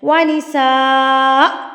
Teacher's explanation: یہ حمزہ ساکن میں تبدیل ہو جائے گا تو آپ نے اس کو ہلکا سا جھٹکے کی طرح روکنا ہے